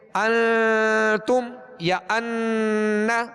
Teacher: ایک الف کی مقدار میں آواز کو ناک میں لے جا کر ٹھہرانا، ناک میں آواز کو ظاہر کر دینا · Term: غنہ